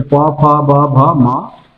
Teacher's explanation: ओष्ठ व्यंजन जिसमें ओठ का स्पर्श हो, किसका हो, ओठ का स्पर्श हो, वो कहलाता है ओष्ठ व्यंजन।